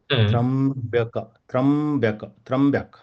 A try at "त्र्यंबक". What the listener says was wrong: त्र्यंबक. So ya should also be clearly audible. Triambak. Triambak. Triambak. Last ka also should be complete. Triambak.